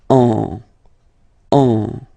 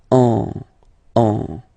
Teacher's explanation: you will get what we call a nasal, so it goes in your nose, and then you get the sound on